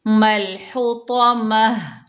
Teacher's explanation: वफ़ की हालत में गोलता को हा बनाएंगे, हाय साकना बताएंगे।